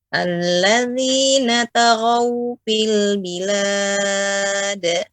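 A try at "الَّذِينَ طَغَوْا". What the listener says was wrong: Ya, untuk tonya kurang Ibu. Tonya lebih tebal lagi. Alladzina taghaw.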